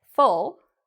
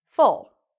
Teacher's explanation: Full has the spread lips, full, and it's a short, quick sound